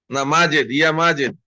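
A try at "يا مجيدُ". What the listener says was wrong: ইয়া মাজিদু, এখানে দম্মা দিয়ে, এক দম্মা দিয়ে পড়তে হবে। এটা আমরা আরো আগেই পড়েছিলাম যে ইয়া এটা হচ্ছে হারফুন নিদা, এবং ইয়া দ্বারা যাকে আহ্বান করা হয় তাকে বলা হয় মুনাদা।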